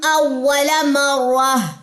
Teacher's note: اول آواز اوپر کو ریز ہوئی ہے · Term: نبر